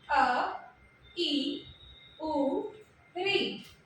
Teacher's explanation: एक मात्रा का समय लग रहा है, ह्रस्व स्वर है।